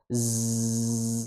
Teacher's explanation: Liazdada z ya disertai dengan suara saofir. Ujung lidah bertemu dengan gigi seri bawah. Z. Kemudian disertai dengan getarnya pita suara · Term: huruf zai